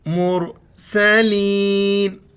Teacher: را ساکن اس سے پہلے پیش ہے، اس کو بھی موٹا کر کے پڑھیں گے۔